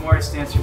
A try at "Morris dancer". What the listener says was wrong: think you rolled the R.